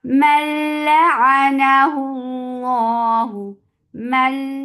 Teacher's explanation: you are never keeping the sound in your nose for these 2 letters, lam and ra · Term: idgham without gunna